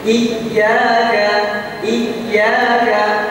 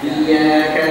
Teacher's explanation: huruf ya dihentakkan sedikit ketika ada bertemu dengan tasdid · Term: annabr